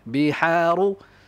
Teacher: Ha kena kompres. Wasatul halq. Di pertengahan tekak ha.